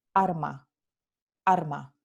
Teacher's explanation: en el andaluz, la palabra alma, which means soul, se pronuncia arma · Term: neutralización de la lateral